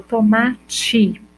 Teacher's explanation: quando eu falo tomate eu tenho i no final